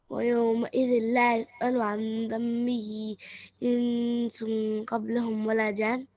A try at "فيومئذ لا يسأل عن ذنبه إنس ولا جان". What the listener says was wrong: فيش قبلهم بس ما فيش قبلهم. فيومئذ there is no قبلهم بس.